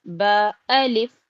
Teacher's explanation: बा को ज्यादा नहीं खींचें एक अलिफ के बराबर